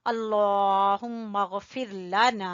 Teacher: हम लफ्ज़ अल्लाह को मोटा पढ़ेंगे, पता है ना आपको, लफ्ज़ अल्लाह से पहले ज़बर है तो हम पढ़ेंगे अल्लाहुम्मा, मीम मुशद्दद का गुन्ना करते हुए आगे हम गैन से मिलाएंगे